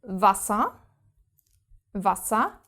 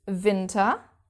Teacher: without exceptions our W is pronounced v